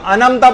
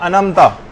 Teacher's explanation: انعمت اس کو لوگ انمتا پڑھتے ہیں, انمتا, اور عین پورا کھا جاتے ہیں. یہ ایک بہت بڑی غلطی, عین پورا حذف کر دیتے ہیں اس میں سے.